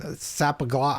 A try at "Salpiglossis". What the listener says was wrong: Salpiglossis. There's an L. Salpiglossis.